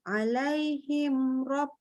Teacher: Ini rabbihim, mim ketemu ba memang benar dengung, tapi mim ketemu ro ini idhar, tak boleh didengungkan.